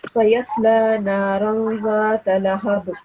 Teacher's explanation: sound of Ba is supposed to be pronounced with a jerk, because this is huruf qalqala. Ba is a huruf qalqala.